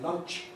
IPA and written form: lʌntʃ (lunch)